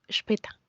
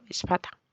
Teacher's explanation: En el caso de la A pasa a pronunciarse como E, por eso digo später y no spata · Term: umlaut